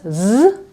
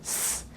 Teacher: we have a vibrant s z and we have the sharp s